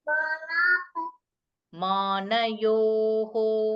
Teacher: That visarga should be o sound. Because yo is coming, so that visarga should be recited as a o sound.